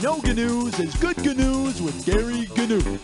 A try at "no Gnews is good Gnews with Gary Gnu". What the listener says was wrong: Gary, don't pronounce the G's.